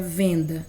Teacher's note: A letra E, a letra N, que formam um único fonema, porque é um fonema nasal, né? Uma vogal nasal.